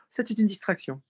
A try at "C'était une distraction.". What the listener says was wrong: No, you're not pushing from the chest. C'était une distraction. Bring your mouth more closed.